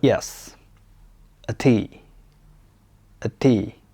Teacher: The fourth tone is a falling tone. It goes down, just like when you're giving a firm answer confidently. It's short and strong.